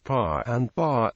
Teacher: Cajun English speakers generally do not aspirate the consonants p, t, or k. As a result, the words pa and ba can sound very similar to speakers of other English varieties.